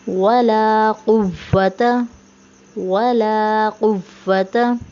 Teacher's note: कुव्वता में जो क़ौफ़ है इसे मोटा पढ़ेंगे